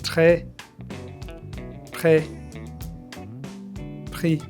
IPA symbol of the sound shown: ʁ